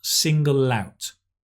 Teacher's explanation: we always connect L-out L-out